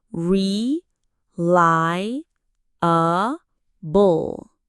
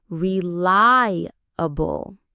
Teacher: Notice where the stress is. It's on that second part.